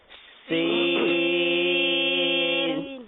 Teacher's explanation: زبان کی نوک اور دونوں دانتوں کے اندرونی کنارے سے، وہی جو زا کا مخرج تھا.